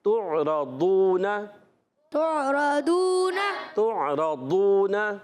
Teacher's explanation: یہ ضاد کلیئر ادا کرنا ہوتا ہے، دال نہیں پڑھنا ہوتا، ڈال نہیں پڑھنا ہوتا، یہ زواد نہیں پڑھنا ہوتا، اس چیز کا آپ نے خاص خیال رکھنا ہے۔ · تعرضون، تا کو عین سے ملانا ہے، عین حلق کے درمیان والے حصے سے، را پر زبر آنے کی وجہ سے را پر ہو جائے گا۔